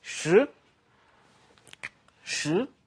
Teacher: Now it's a climbing, rising tone.